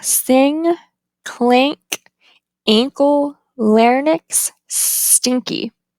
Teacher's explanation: the ang is voiced and velar.